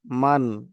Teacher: দেখেন এখানে নুন সাকিন আছে, নুন সাকিনের পরে দেখেন হামজা চলে এসেছে। তো নুন সাকিনের পরে হামজা আসার কারণে এই নুন সাকিনকে গুণনা করব না, তাড়াতাড়ি পড়বো।